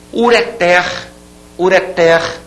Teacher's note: é uma palavra oxítona não se diga portanto uréter